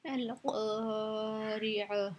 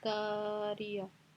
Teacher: क़ाफ मोटा है, इसको हम मोटा पढ़ेंगे। क़ाफ की वजह से अलिफ भी मोटा होगा।